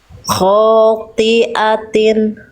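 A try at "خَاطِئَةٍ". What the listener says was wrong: Khotiatin. Oke, jadi toknya Bunda ini sama huruf short ini dia udah tebel tapi pangkal lidahnya tuh masih nanggung. Jadi masih khoti, khoti, harusnya khoti, ti, khotiatin. Udah bagus tapi nggak jadi huruf betul-betul tipis, nggak. Cuman kurang tebal aja huruf toknya.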